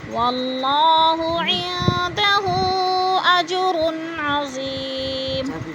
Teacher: واللہ کہ اللہ کو پر کر کے پڑھیں گے